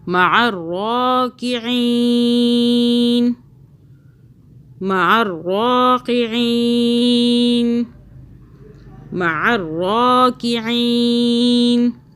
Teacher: را کو موٹا پڑا، عین کو حلق سے پڑھنا ہے.